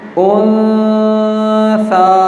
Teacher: آواز ناک میں جا رہی ہے لیکن زبان تالو سے نہیں لگ رہی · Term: اخفا